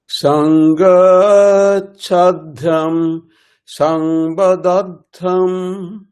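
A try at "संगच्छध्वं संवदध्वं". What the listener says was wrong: বদাধ্বম, গলাটা ওঠানামা করাতে হবে, বুঝা গেল? তাহলে শুনতে ভালো লাগবে। সংগাচ্ছধ্বম সম্বদাধ্বম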